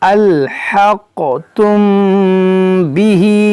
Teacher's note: یہاں میم ساکن کے بعد با، یہاں پر اخفاء شفوی کا قاعدہ لگے گا، یعنی یہاں پر بھی غنہ کریں گے